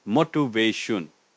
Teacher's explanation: 4 syllables with the stress on the 3rd syllable